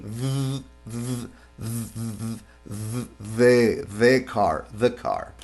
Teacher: ponemos la parte de la lengua, la punta de la lengua, presionando sobre los dientes superiores incisivos y dejamos pasar el aire por allí